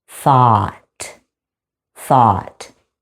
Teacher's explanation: You have the unvoiced TH like in the word think, vowel sound ah as in bought, and then it ends with a clear T.